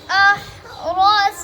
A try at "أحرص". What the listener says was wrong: आपने أحرصن सीन पढ़ दिया أحرصن पढ़ो أحرصن أحرصن